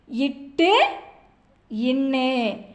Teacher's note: நாவின் நுனி அன்னத்தின் நுனியை பொருந்துவதால் பிறக்கும் மெய்யெழுத்துக்கள்